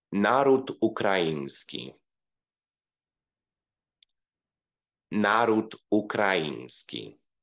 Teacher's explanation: If the first word ends with a consonant, we also need to insert a glottal stop before starting to pronounce the second word